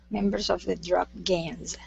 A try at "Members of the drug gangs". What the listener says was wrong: Okay, good. All right, nice job.